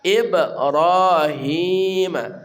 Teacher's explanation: Ibrahim, ra ya dari ujung punggung lidah kita, ra tebal tafkhim